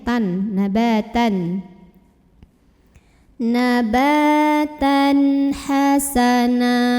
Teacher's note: Karena ada tanwin fathah bertemu dengan huruf ha, maka tanwinnya ini dibaca jelas. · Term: idhar halqi